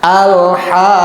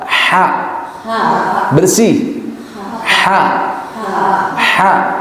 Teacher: Awas, haknya tidak dibawa dari dada, tapi di tengah tenggorokan, bersih.